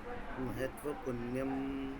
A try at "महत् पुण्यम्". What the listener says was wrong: महत् पुण्यम, महत्व नहीं है, वो नहीं है, वहाँ आधा तो है। महत् पुण्यम,